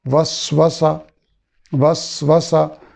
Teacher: 2 سینے ہیں، پہلے ساکن ہے دوسری متحرک ہے، دونوں میں سیٹی کی آواز ہوگی